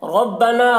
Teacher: نا میں جو مد ہے اس مد کو مد منفصل کہتے ہیں، اسے 3-4 الف کے برابر کھینچ کر پڑھتے ہیں